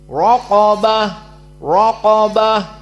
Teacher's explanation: ra mufakhamah dikarenakan fathah dan qaf mufakhamah dalam keadaan apapun. Dan ba dan ta dari huruf muraqqaqah. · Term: dua tafkhim